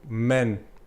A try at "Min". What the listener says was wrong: I mean, like men, more like I instead of like an E, but it's fine. Min.